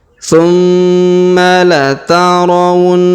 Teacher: huruf ha kita panjangkan 2 harokat karena terdapat alif di depan huruf ha ya.